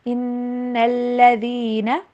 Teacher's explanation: Stress دینا ہے نون کے اوپر، ذال کی آواز کو زا کی طرح نہیں پڑے.